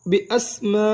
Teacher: میم الف مد زبر ما. 6 حرکات لمبا ادا کریں گے.